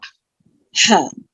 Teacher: हा कहाँ से है, वसतल हलक से है, हलक का दरमियानी हिस्सा। हा, जैसे हम हवा जो है ना आपकी, जिस सेंटर पार्ट और जो है आपको एकदम जो हवा की नाली है ना, उसको एकदम टाइट करके आवाज निकलेगी इसकी।